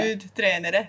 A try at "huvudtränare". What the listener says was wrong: Yeah, good.